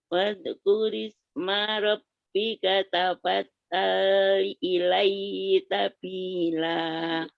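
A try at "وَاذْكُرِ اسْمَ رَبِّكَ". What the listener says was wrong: Terus wadkurnya tadi, zalnya tanpa kolkolah zalnya. Wadkur. Wadkuris.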